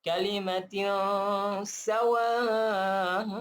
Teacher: Ila kalimatin, sini ikhfa lah. Kita bagi 50% dengung dan 50% pada sin sebutan S.